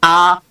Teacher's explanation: আমরা যখন বলবো আ, চোয়াল কিন্তু অনেক বড় প্রসারিত হবে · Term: বিবৃত